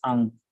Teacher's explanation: In both the languages, first person singular personal pronouns begins with the central low unrounded vowel a and ends with the velar nasal consonant na